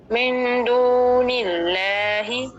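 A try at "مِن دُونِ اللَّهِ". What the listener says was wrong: اچھا دلہ نہیں کریں گے، لا کریں گے تو آپ کو مجہول ہو جائے گا، آپ نے منہ کھولنا ہے. من دون اللہ.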